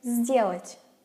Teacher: So in both cases, здесь и сделать, I have a z sound, a ringing consonant.